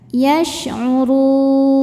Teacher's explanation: Mad tabi'inya waw sukun yang sebelumnya baris dhammah, kemudian huruf yang disukunkannya huruf nun. Maka ro-nya panjang, boleh 2 atau 4 atau 6 harokat, asal konsisten dalam sekali baca. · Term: mad arid li sukun